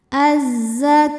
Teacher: lam yang menghadapi huruf Syamsiah yaitu huruf Zai maka cara bacanya Alif lamnya tidak dibaca ya jadi masuk langsung ke Zai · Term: Idgham Syamsi